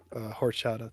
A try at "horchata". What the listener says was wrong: The H is silent, my friend. The H is silent.